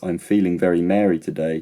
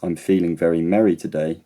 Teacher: merry and Mary are only different because of the length of time I say the vowel for. The vowel e can be either short e or long e in my dialect.